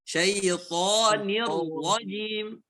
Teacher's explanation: Jangan didengungkan toni, salah.